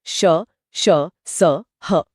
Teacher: इनको बोलते समय हवा मुंह में घर्षण के साथ निकलती है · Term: उष्म या संघर्षी व्यंजन